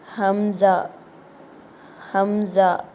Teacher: இந்த எழுத்து கீழ் தொண்டையிலிருந்து வெளியாகணும்